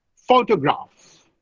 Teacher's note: photograph, the stress is on the first syllable